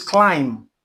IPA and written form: klaɪm (Climb)